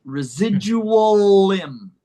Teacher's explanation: the L for limb connects, residual limb.